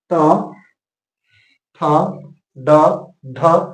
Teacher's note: आपका जीभ मुर्धा की तरफ जाता है और इसलिए इसका उच्चारण स्थान क्या हो गया मुर्धा तो ट · होता है मुर्धा और मुर्धा होता है ठीक तालू के पीछे जैसे ही आप बोलेंगे ट ठ ड ढ आपका जीव जो है सीधा मुड़ जाएगा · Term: ट वर्ग